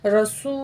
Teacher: वाव साकिन है, इससे पहले पेश है, 2 अलिफ के बराबर खींचेंगे।